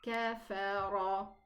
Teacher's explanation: I elevated the kaf and the fa, and this is not proper reading. So these two letters are not elevated, so we pronounce them kafa, and then we elevate the ra in the pronunciation, and we say kafara.